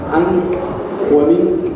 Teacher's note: فمخرج هذه الغنة من الخياشيم والنون التي تخرج من طرف اللسان هي التي خفيت